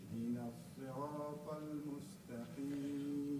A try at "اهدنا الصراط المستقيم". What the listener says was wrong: Try to hold on to the ra. Ihdina sirat. You started off well, and you start spreading it out. صراط المستقيم. اهدنا الصراط المستقيم.